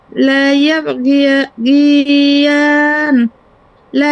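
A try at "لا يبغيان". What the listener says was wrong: হ্যাঁ, লা ইয়াবগিয়ান। হ্যাঁ, এটা কিন্তু আপনি আবার কলকলা করবেন না, লা ইয়াবগিয়ান এমন হবে গিয়ান, আবার এরকম কলকলা করবেন না কিন্তু। এটা হবে লা ইয়াবগিয়ান, অন্তাস্য একার আ জন্য।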